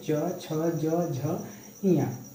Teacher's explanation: च वर्ग तालु से बोला जा रहा है